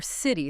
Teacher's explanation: When a T sound comes between two vowel sounds, it often softens. It sounds less like a sharp t and more like a soft d or even sometimes a quick r sound. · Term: flap T